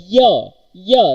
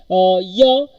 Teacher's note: Palatal sound. Palatal, the body of the tongue touches to the hard palate.